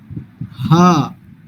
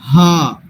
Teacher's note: ہا ہے جو ہمارے حلق کے آخری حصے سے ادا ہوگا، یعنی چیسٹ والے حصے سے. یعنی اگر اس کو ادا کرنا ہے نا تو میں کہوں گا کہ ہم یہاں پہ ہاتھ رکھیں، اور جب ہم نے ہا پڑھنا ہے تو ہمیں ہماری چیسٹ میں وائبریشن فیل ہونی چاہیے.